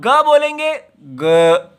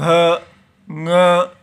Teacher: लेकिन जब आप ग बोलेंगे ग तो गले में कुछ बंद हो रहा है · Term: संवार